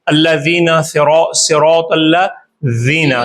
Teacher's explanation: زبان کی نوک دانتوں کی ثنایا علیہ سامنے والے اوپر کے جو دو دانت ہیں ان کی نوک سے لگتی ہے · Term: زال